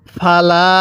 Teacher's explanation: লামের মধ্যে কিন্তু আমরা এক আলিফ টান দিব জবরের পরে এরকম খালি আলিফ থাকলে সেখানে এক আলিফ টেনে পড়তে হয় কিভাবে পড়ব আল হাকুমির [মিউজিক] রাববিকাফালা এরপরে তাজবর তা কাপের মধ্যে এক আলিফ টান।